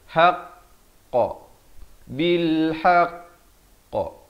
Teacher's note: ditahan sekejap baru dilepaskan. Dan bila waktu lepaskan itu pada huruf qaf dan ta dibulatkan. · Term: khakhalah akbar